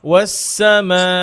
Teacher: আমরা এর আগে লাস্ট ক্লাসে বা এর আগের ক্লাসে পড়েছিলাম যে মাদ মুনফাসিল কসর করা যায়, কসরে মুনফাসিল করা যায়, কিন্তু মাদ মুত্তাসিল কসর করা যাবে, ছোট করা যাবে না। এটা 4 থেকে 5 হারাকা টানতেই হবে